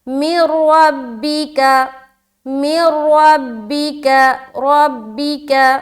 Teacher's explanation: ہم جب میم کو را سے ملائیں گے تو ہم ادغام تو کریں گے لیکن غنہ نہیں کریں گے، یعنی کہ رکنا یا دیر لگانے والا جو کام ہوتا ہے وہ نہیں کرنا۔ · را کو موٹا رکھنا ہے، را مشددہ کے اوپر کیا ہے؟ زبر ہے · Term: ادغام تام